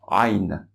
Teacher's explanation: elle doit se prononcer du fond de la gorge en essayant de restreindre le passage. Presque si on s'étranglait, même si on se coinçait ici, on se serrait au niveau du bas de la gorge. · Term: La lettre Ain